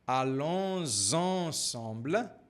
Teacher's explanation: Aqui nós temos a ligação com o som de Z.